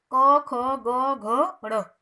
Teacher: कवर्ग का उच्चारण स्थान कहाँ से हुआ, कंठ से